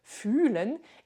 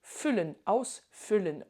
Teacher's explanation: c'est pas pareil entre ressentir, fühlen, et füllen, ausfüllen. On a un U long, un U court. Et donc, globalement, tu peux retenir que quand il y a un H, la voyelle est rallongée.